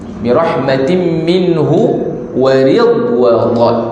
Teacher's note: Dan huruf dad dia tidak ada qalqalah.